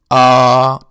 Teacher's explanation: It is pronounced like a Hamza followed by a long vowel Alif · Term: Alif Madda